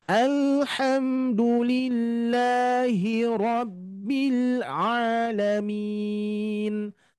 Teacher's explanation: Huruf lam Bapak Ibu sekalian termasuk huruf yang mempunyai sifat mengalir, tawasut, sedikit mengalir. Maka harus mengalir, jangan sampai memantul ya. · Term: lam sukun